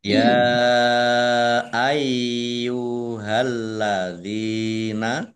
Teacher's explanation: Ya fathah berdiri mat tobi'i, tetapi karena bertemu dengan huruf alif di kata yang berbeda, maka menjadi mat jaiz munfasil. Dibaca panjang, boleh 5, boleh 2 harokat. Yaknya dibaca double, ada tasdidnya.